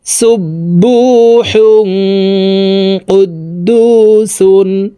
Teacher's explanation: তানউইনের পরে ইকফার হরফ কফ আসছে, এই কারণে তানউইনওয়ালা হাটি নাকের ভিতরে লুকাইয়া গুন্নার সহিত পড়ব। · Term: ইকফা গুন্না